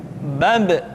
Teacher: Ketika mati, maka terdengar suara pantulan.